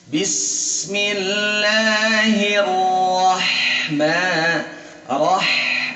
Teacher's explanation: dari hi tipis ketemu huruf tebal hiro dan ditasydid. Hiro baru fathah.